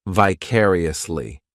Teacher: This adverb has 5 syllables, and the stress is on that second syllable